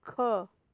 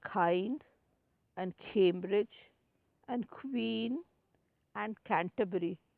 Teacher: The back of the tongue is against the soft palate.